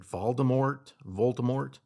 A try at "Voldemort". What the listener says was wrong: The T is silent. Voldemort.